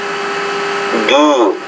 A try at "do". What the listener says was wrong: Do. A little bit longer. Do.